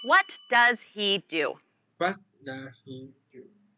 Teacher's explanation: What and do are the key words in this question. So, they should be emphasized, and your voice should go down at the end.